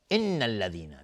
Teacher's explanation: نون مشدد دو حرکت غنه میدیم